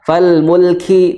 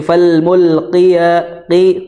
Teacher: di aqsal lisan qaf ya, di pangkal lidah ya